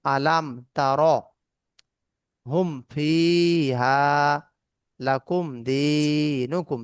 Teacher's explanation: মিম সেকেন্ডের পরে বা ও মিম ছাড়া অন্য কোনো অক্ষর আসলে মিম সেকেন্ডকে বিনা গুণনায় স্পষ্ট করে তাড়াতাড়ি পড়তে হবে, মানে গুণনা হবে না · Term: মিম সেকেন্ডের ইজহার